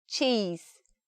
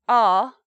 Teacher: to open widely to say that sound in comparison to cheese cheese is a wide sound our lips are spread wide but for say r we're much more open in the shape